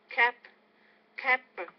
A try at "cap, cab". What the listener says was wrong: Nope, you want to make it longer.